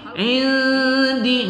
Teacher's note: nun sukun bertemu dal kita baca berdengung pada ikhfa hakiki